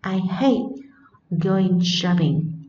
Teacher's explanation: Trọng âm của chúng ta phải rơi vào từ phủ định, đó là từ hate mới đúng nhé.